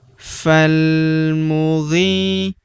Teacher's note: Huruf ghi kita panjangkan dua harakat karena terdapat ya sukun di depannya